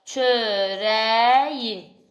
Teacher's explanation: Kökdəki samitin sait əlavə etdiyinə görə y əvəzlənməsi baş verməsidir. Yəni burdakı bitişdirici samit hesab olunmur.